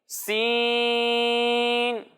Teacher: جب ہم سین کی ادائیگی کریں گے تو اسے ہم باریک پڑھیں گے اور اس میں سیٹی کی آواز آئے گی